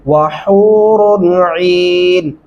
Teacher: وحو واو پڑھتے ہوئے ہونٹ گول ہونے چاہیے اور ہا کے اوپر باریک ہا پڑھنا ہے آپ نے